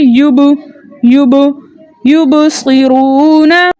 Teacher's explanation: یہ اپنے مخرج میں رکے گا نہیں بلکہ اس کی آواز اس کے مخرج سے واپس پلٹ کر آئے گی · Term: حرف مقلقل